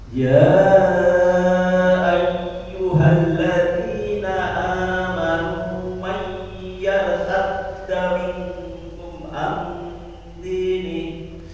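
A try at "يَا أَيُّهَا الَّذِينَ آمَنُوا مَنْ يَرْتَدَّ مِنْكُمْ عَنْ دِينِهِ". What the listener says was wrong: Ya, saat baca ya tipiskan.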